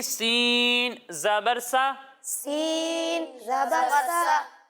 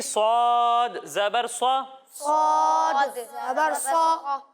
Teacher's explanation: इसी तरह जब हम स्वाद को पढ़ेंगे तो इसमें भी सीटी की आवाज़ तो आएगी, लेकिन आपको ये याद होगा कि स्वाद हरूफ मुस्ताडिया में से है तो इसे मोटा कर कर पढ़ेंगे। यानी सीन को बारीक पढ़ते हैं और स्वाद को मोटा कर कर पढ़ते हैं। यानी इसे पढ़ेंगे सीन ज़बर सा, सीन ज़बर सा, और इसे पढ़ेंगे स्वाद ज़बर स्वा, स्वाद ज़बर स्वा।